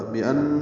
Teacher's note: بأن نون مشدد پہ غنہ ہے